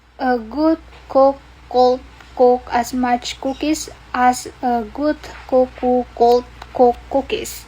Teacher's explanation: G and k, good and cook. Voicing contrast between voice velar stop g and voiceless velar stop k.